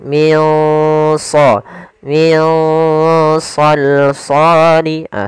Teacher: pula cara membacanya adalah kita samarkan nunnya ke huruf Shad nah Shad termasuk huruf yang tebal dan huruf Istia maka dia samarkannya agak ditebalkan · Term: bacaan Ikhfa, ikhfa